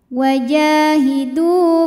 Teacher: karena ada wau sukun didahului harakat dah maka Dal panjang dua harakat